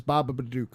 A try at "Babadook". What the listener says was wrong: I think you're adding another syllable in there.